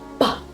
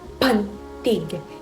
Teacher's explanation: Ginagawa sa pamamagitan ng pagdikit ng dalawang labi at pagpapakawala ng hangin.